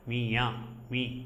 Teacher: குற்றிய லிகரம் மீயா மீ என்ற அந்த சத்தத்தில் அது தன்னுடைய மாத்திரை அளவிலிருந்து குறைந்து ஒலிப்பதாக சொல்லப்படும்